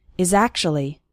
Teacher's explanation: the words is and actually kind of blend together